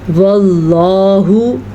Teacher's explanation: लफ्ज़ अल्लाह से पहले ज़बर है तो लफ्ज़ अल्लाह को पुर पढ़ेंगे · लफ्ज़ अल्लाह को हम पुर पढ़ेंगे क्योंकि यहाँ पे हमारे पास पेश है। जब लफ्ज़ अल्लाह से पहले पेश हो या ज़बर हो तो लफ्ज़ अल्लाह को पुर करके पढ़ा जाता है,